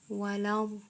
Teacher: Bacanya harus panjang 6 harokat, kemudian diikuti dengan tasydid atau ditekan.